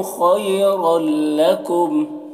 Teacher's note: خی خا کو پور پڑھیں گے، حروف مستعلیہ میں سے ہے، اور یہاں پر یا لین ہے، اسے جلد پڑھنا ہے۔ رل میں ادغام تام ہو رہا ہے، تنوین کو لام سے ملا کر بغیر غنہ کے پڑھیں گے۔ لکم یہاں پر وقف مطلق کی علامت ہے، یہاں پر وقف کریں گے تو اس کو اس طریقے سے پڑھیں گے۔